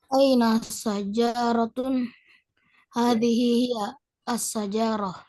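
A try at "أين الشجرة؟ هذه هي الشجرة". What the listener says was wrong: Jangan lupa alif lam ya. Nah, itu mungkin bagian kecil tapi harus tetap diperhatikan.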